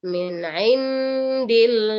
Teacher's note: Jadi nunnya disamarkan langsung kepada penyebutan huruf dal. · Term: ikhfa